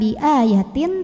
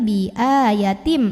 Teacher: tanwin kasrah yang bertemu dengan huruf mim maka tanwin kasrahnya lebur atau masuk ke mim ya Jadi bukan biatin tapi B yatim mem sambil tahan dengung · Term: Idam bhunah